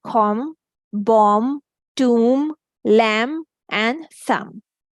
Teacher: When mm and b are together, we simply say mm, and we don't pronounce b. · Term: silent